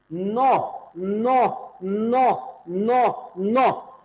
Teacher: शुद्ध नौ को उच्चारण वो होगा जब आपकी जीभ कहां लग जाएगी दंत में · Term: न का शुद्ध उच्चारण